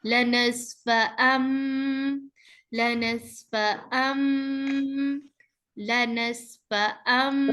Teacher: तनवीन की आवाजें मीम में चेंज हो जाएंगी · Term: इकलाब